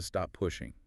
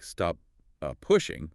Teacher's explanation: The P in stop is formed held and you move straight into the P for pushing. If you release the first P, it would sound like stop uh pushing which is unnatural and slow.